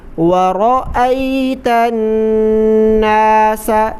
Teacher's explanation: را کو موٹا کر کے پر کر کے پڑھیں